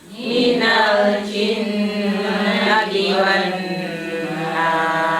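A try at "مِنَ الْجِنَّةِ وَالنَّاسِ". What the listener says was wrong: Nanti nunnya didengungkan, ditahan ya. Minal jinnati wan nas.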